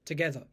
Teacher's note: the tur and the ER at the end are both just schwas